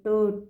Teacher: ठीक है, ये टो ठ आपकी जो बोल के आप देखिए खुद से, आप जब बोलोगे अपने आप ही आपको पता चल जाएगा कि आपकी जो जीभ है वो मुड़ जाएगी, आगे से मुड़ेगी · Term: मूर्धा व्यंजन